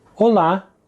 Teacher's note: Another way of saying hello is olá, emphasis on the second syllable. Olá. It's important here not to confuse it with the Spanish hola, which has its emphasis on the first syllable.